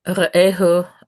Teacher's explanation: ehu is one of those suffixes that always has penultimate stress.